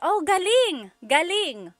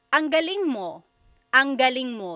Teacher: if the emphasis is on the second syllable, galing, that means good or great or excellent.